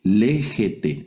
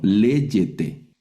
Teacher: Si sigue un sonido de E o de I, vamos a pronunciar la gamma, que es la letra que estamos viendo, la vamos a pronunciar como Y